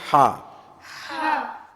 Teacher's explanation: இது தொண்டையுடைய நடுபாகத்தில் வரும். நாவின் கடைசி பகுதி மற்றும் சற்று மேல் உயர்த்தி குரல் நடுத்தொண்டையிலிருந்து அழுத்தமாக உச்சரிக்க வேண்டும். உள்நாக்கு இருக்குல்ல, உள்நாக்கு பின்னால் தொண்டையை கொஞ்சம் உயர்த்தி இந்த ஹா சொல்லணும்.